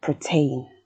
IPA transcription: pɚteɪn